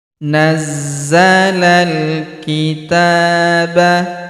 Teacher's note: Huruf ta kita panjangkan dua harakat karena terdapat alif kecil di atasnya. Nazzalal kitaba bil huruf bih langsung sambung ke huruf lam yang berharakat sukun. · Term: panjangkan 2 harokat